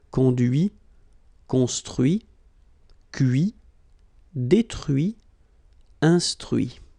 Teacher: even if I put this final T, so as usual, I don't pronounce it.